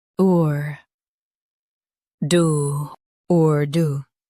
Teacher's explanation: Emphasize ur and keep du soft.